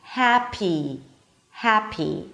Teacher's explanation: Ha, then it's the as in cat, ha. A P sound and a high E, happy, happy. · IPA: ˈhæpi